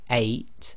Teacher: A if you say eight but say it very slowly eight you should feel that your throat blocks a tiny bit right at the beginning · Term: Hamza